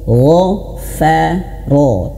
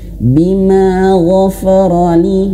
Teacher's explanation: Dan huruf ro juga tebal, ro, gha, fa, ro. Jangan sampai huruf fa ini tebal terbawa oleh huruf ghain.